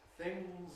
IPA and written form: θɪŋz (things)